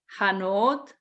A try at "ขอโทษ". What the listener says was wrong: No, it's like K ขอ and like a T โทษ ขอโทษ.